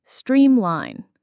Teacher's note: the stress is on the first part of the word